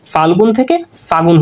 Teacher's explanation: মানে কোনো কারণ ছাড়াই, মানে এখানে কোনো কারণ ছাড়াই যে যেই স্বরধ্বনিটা আছে, যে লটা কিন্তু চলে গেছে কোনো কারণ ছাড়াই, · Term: অন্তর্হতি